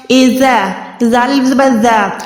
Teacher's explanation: زال کی ادائیگی کرتے ہوئے آپ نے وسل ساؤنڈ کو ہرگز پروڈیوس نہیں کرنا، اور زا کی ادائیگی کرتے ہوئے یہ والی آواز نکلنی چاہیے، یعنی سیٹی کی آواز آنی چاہیے۔